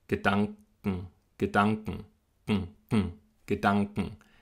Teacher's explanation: der hintere Teil der Zunge an den hinteren Gaumen nach oben, da klebt sie sich dran und dann bleibt sie da bis zum Ende des Wortes: Gedanken die Zungenspitze bleibt unten. · Meine Zunge bleibt wirklich nach dem A. Also nach dem A geht sie in die Stellung für den Anglaut. Das ist auch die gleiche Stellung für das K.